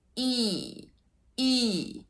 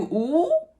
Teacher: So E is a fronted vowel and ooh is a backed vowel. So even though E and oo have very similar height, they're both basically like on this level, like of not very open, they make very different sounds because one is fronted, E, and one is backed, oo, oo.